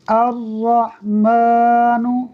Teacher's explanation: حمزہ، را زبر ار، را ح زبر رح، الرح، میم کھڑا زبر ما، الرحمن، نون پیش نو، الرحمن، حمزہ کو ڈائریکٹ را سے ملائیں گے، لام پڑھنے میں نہیں آئے گا، میم پر کھڑی حرکت ہے اس لیے اس کو کھینچیں گے، اور نون پر حرکت کی وجہ سے اسے نہیں کھینچیں گے